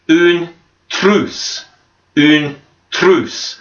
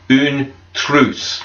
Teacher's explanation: And remember the R, when we pronounce it, we kind of roll the R. It's sort of like your tongue vibrates.